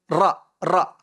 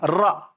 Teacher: Menekan pada gusi gigi depan atas. Melencong ke belakang tepi hujung lidah. Ra, huruf ra.